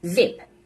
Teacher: This is a voiced sound. It takes place at the alveolar ridge, and it's a fricative sound.